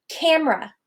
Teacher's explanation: That middle syllable is so unstressed, I take it out completely.